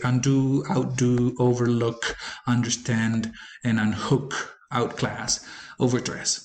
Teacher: the prefixes that we attach to the words don't modify the stress placement of the base word